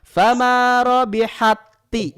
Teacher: Langsung aja tanpa hamas, tanpa ada udara yang keluar. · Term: idgham